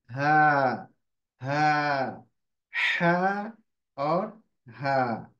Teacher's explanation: जो निकलेगा वह निकलेगा मिडिल थ्रोट से मतलब बीच हलक से